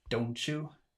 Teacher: the T of don't and the Y of you change to something resembling a ch sound